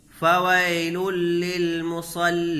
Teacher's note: حروف یرملون میں سے لام ہے، تو یہاں بغیر غنہ کے ملا کر کے پڑھیں گے، غنہ نہیں ہوگا۔ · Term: ادغام بلا غنہ